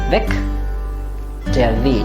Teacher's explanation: Weg or Weg ends with a G, so the pronunciation will be K. So you should hear the K at the end of it. Weg, der Weg.